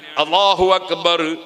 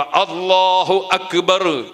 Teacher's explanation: അപ്പോ എന്തു വേണം അള്ളാ എന്നത് തൊണ്ടയുടെ ആ തലക്ക് നിന്ന് മൊഴിയുന്നതുപോലെ ഉച്ചരിക്കുന്നത്ുപോലെ അക്ബർ എന്ന ആ എന്ന അക്ഷരവും തൊണ്ടയുടെ ആ തലക്ക് നിന്ന് തന്നെ ഉച്ചരിക്കണം